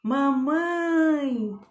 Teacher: Então, esse mamãe saiu forte no mãe. A sílaba tônica da palavra mamãe é mãe.